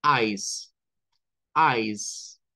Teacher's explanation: la s sin vibración